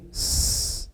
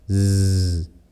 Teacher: kalau sin bersifat hams, tapi kalau zai bersifat jar. Itulah yang menyebabkan suara desisnya berbeda dengan huruf sin.